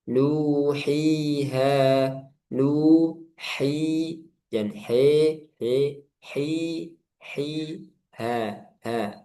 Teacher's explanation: Nuhiha dengan menyempurnakan setiap harokatnya. Nu dimonyongkan, hi diturunkan rahang, ha dibuka.